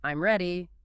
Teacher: If you say it with a falling tone, I'm ready, it's a statement.